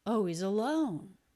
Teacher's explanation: And then we also have the O diphthong on our stressed syllable here. He drops the H in he's.